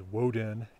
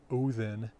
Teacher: in Old Norse, anywhere that you had one time a W before a U or an O, that W has disappeared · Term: W drops out before U